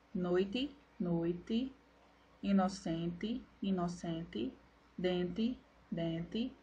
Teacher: consoantes são articuladas como dentais ou alveolares